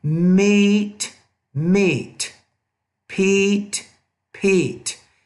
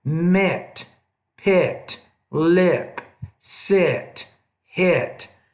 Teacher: English has two different vowel sounds, the longer, more tense, and the shorter, more lax vowel here.